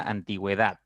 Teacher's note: la u es una vocal cerrada la e es una vocal abierta sin embargo la u está sonando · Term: diéresis